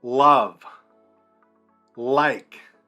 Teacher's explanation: Notice you got to stick your tongue out, exaggerate it. You're bunching your tongue together, and you're saying ul.